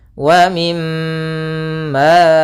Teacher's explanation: cara membacanya yaitu suara mimnya ditahan dulu. Wa mim sepanjang dua harakat.